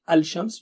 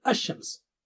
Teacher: Lam is sacrificed for all tongue tip letters as well as two more letters, sheen and dad. So there are 14 letters which are called Shamsi letters, sun letters, as in Shams.